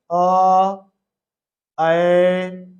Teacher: अर्ध विवृत अर्थात मुंह आधा खुलेगा तो देखिए अ ऐ और मुंह कितना खुल रहा है आधा